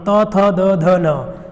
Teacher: जिनके बोलते समय हमारे दांत का यूज होता ही होता है ना, दांत से स्पर्श होता ही होता है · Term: दंत व्यंजन